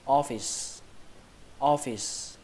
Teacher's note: trọng âm của từ này rơi vào âm đầu tiên, âm o. Âm o nó giống như trong chữ là chữ o đấy, o.